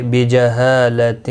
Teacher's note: ہا الف مدہ ہے، ایک الف کی مقدار کے برابر کھینچ کر پڑھیں گے۔ باقی کسی بھی حرکت والے حرف کو کھینچنا نہیں۔